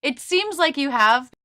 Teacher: even though this sentence is very fast it still has longer stressed words seems known long